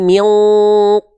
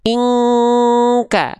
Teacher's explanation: dia Ming kuat dengungannya ya tapi karena Q itu Huruf tebal Q itu Huruf tebal maka dengungan engnya itu beda dengan dengungan Kaf kalau Kaf dia tipis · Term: ikhfa